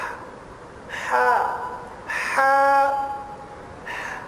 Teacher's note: گلے کا درمیان یہ آواز ہے